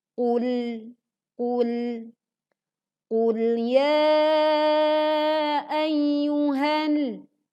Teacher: pastikan sebagian suara tertahan di ujung lidah karena menempel di langit-langit bagian depan dan tidak memantulkan suaranya. Maka tidak boleh dibaca qul ya. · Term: lam sukun